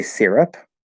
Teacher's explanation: i might say syrup where it's actually more of an r-colored e sound